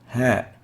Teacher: articulates at the deep throat and that's why we classify it as a throat letter